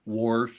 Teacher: There's also areas up there where they pronounce words like wash, like wash. They put an R in the word.